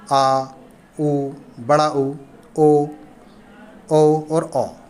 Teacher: जिन स्वरों के उच्चारण में जीभ का पश्च यानी कि पीछे का भाग काम करता है, उसे पश्च स्वर कहते हैं।